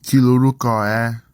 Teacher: the nasal sound becomes a l sound when ni contracts to the following word, and the r sound is lost